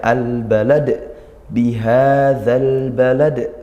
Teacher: di akhir ada dal yang dibaca waqaf, maka ini qalqalah kubra. Kita baca pantul, ya, al balad bihadzal balad, seperti itu.